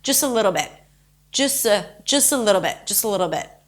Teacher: you can sort of drop the T and connect it quickly to the next word